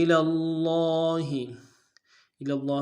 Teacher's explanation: میں لام کو لفظ اللہ کے لام کے ساتھ ملانا ہے، لام کے اوپر تشدید زور دیں گے، لام کے اوپر کھڑا زبر ہے ایک مقدار میں کھینچیں گے